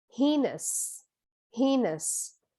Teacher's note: and the stress is on the first syllable